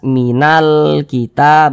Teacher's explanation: Karena cara membaca huruf lamnya ini dibaca izhar. Huruf lamnya ini terbaca dengan jelas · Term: alif lam qamariyah